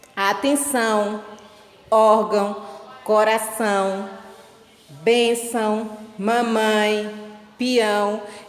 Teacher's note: Como nós já vimos, o tio ele não é um acento, ele é um sinal que é utilizado para indicar a nasalização, ou seja, um som nasal, aquele som que sai parte pela boca e parte pelo nariz. É usado sobre as vogais A e O.